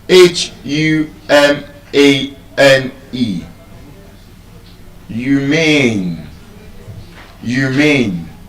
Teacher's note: Where does the voice go up? Where is the voice louder? Where is the voice bold? Humane, the second syllable.